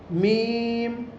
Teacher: میم کا مخرج ہے دونوں ہونٹوں کی خشکی کا حصہ، یعنی ہم باہر کی جانب کے جو ہونٹ ہیں ہمارے ان دونوں کو ہم آپس میں ملائیں گے سوکھی جگہوں کو تو یہ میم ہمارا ادا ہو جائے گا.